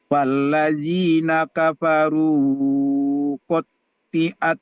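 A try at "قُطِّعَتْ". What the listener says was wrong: Kofnya itu dhammah. Qutti'at. Tadi kesalahannya Pak Haji baca T-nya itu panjang.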